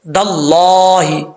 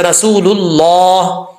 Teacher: اللہ کے لام سے پہلے زبر یا پیش ہو تو اللہ کا لام پر پڑھا جاتا ہے